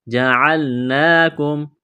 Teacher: نون کے اوپر کڑا زبر ہے، ایک الف کے برابر کھینچنا ہے